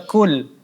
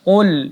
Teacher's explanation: Kita baca kul, ya, tetapi dibaca qul, ya ditebalkan huruf qafnya tanpa ada huruf seperti huruf kaf. Tapi qul, ya ditebalkan.